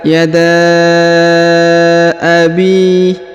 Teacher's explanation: huruf Bi dipanjangkan dua harakat karena di depannya terdapat Ya Sukun